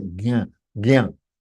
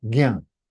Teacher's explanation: Ja and anunasika gives you gyan. It is gyan. Anunasika, gyan. It has to be nasal sound.